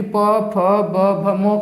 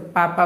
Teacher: प, फ, ब, भ, म को जो बोलते हैं तो क्या होता है, हमारा ओंठ सट जाता है। यानी कि दोनों ओंठ ऊपर जो नीचे को होते हैं ये क्या होता है, आपस में सट जाते हैं। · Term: ओष्ठ व्यंजन